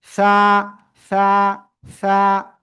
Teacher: জিহ্বার আগা উপরে 2 দাঁতের আগা লাগিয়ে বাতাস বের করে উচ্চারণ হবে